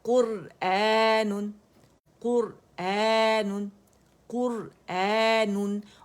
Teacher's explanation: یہ مد بدل ہے کیونکہ یہ مد لیٹر حمزہ کی آواز کو اسٹریچ کرے